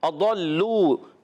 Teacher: ضاد کو لام سے ملانا ہے, لام مشدد ذرا رک کر ادا کریں گے. لام واو پیش لو, واو مدہ ہو جائے, ایک الف کھینچنا ہے.